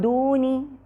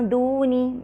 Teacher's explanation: تو زبان نون کے مخرج کو چھوتی نہیں ہے، بلکہ منہ میں ایک طرح سے سسپینڈڈ یعنی جیسے لٹکی ہوئی رہتی ہے، اور نون کے مخرج کے قریب سے گزرتی ہوئی غنہ کرتے ہوئے اس کے بعد والے حرف کے مخرج کے قریب جائے گی.